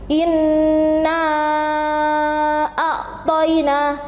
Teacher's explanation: Jadi membacanya itu harus panjang, 2,5 alif atau 5 harokat. Bisa juga disebut dengan 5 ketukan. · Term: mat jaiz munfasil